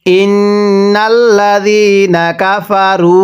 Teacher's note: ফা, কাফা, র ওয়াও পেশ রু, এখানেও এক আলিফ। ইন্নাল্লাযীনা কাফারু, পেশের পরে ওয়াও সাকিন এক আলিফ টানতে হয়।